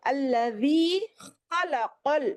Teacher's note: خا کا مخرج الگ ہے، دیکھیے یہ ابتدائی حلق سے آتا ہے، اور قاف کا مخرج زبان کی جڑ اوپر تالو سے لگانے سے آتا ہے.